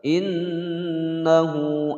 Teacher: Nun bertasydid yang ditekan ditahan dua harokat